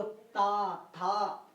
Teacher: जिन वर्णों का उच्चारण करने में हमारी जीभ दांतों से लगती है मित्रों, उसे हम दंत कहते हैं।